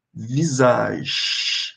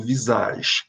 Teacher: Observe que eu não tô pronunciando o e do fim